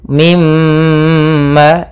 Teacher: ketika ada mim bertasydid, suara nya atau suara gunnahnya ditahan. Mimma, dua harakat.